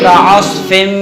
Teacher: تو ادغام کیسے کرتے ہیں کہ ناک کے اندر یعنی پہلے تو دونوں پہلے حرف کو دوسرے حرف میں ملا کے مدغم کر دیں گے اور پھر ایک الف کے برابر رکیں گے. ایک الف کے برابر رک کے ناک میں واضح لے جائیں گے